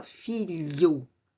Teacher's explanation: Fílio. Fílio era pronunciado a nível dos dentes. Passou a filho. A língua sobe ao palato. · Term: palatalização